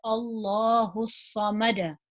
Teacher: if there's a Fatah before the name of Allah we know that we pronounce that lamb in the name of Allah heavy